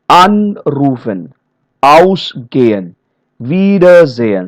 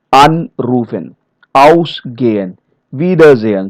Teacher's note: So we see the stress is on the prefix part